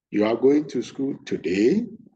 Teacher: I raised the today ending part of the sentence, high pitch. When you do that, it sounds like a question, or what you are saying, you are not sure of what you are saying.